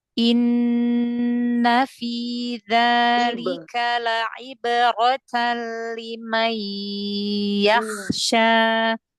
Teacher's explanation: huruf ain yang kasrah itu dijelaskan huruf ainnya biar tidak seperti Hamzah ya